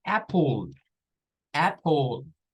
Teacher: Esta se pasa aquí, el sonido acá, casi siempre las letras, las palabras que llevan la letra L y E al final, sucede este fenómeno, que se intercambia la vocal de posición con la L y resulta que la E se vuelve un schwa